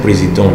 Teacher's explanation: The en here give us the semi-vowel sound, nasal sound.